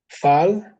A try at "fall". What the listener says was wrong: Are you sure? The A pronounced as O. A fall. Okay, it's O.